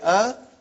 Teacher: alif has no speech sound when you say ah it is the sound of hamza